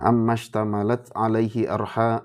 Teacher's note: Ro ya, ro sukun. Itu kalau diawali fathah itu tebal.